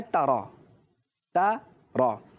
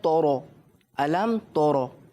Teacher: تا کو پڑھنا ہے باریک اور را کو پڑھنا ہے موٹا. لیکن ایسا نہیں ہونا چاہیے کہ را کی وجہ سے تا کو موٹا پڑھ دیں، را کی وجہ سے تا کو موٹا پڑھ دیں.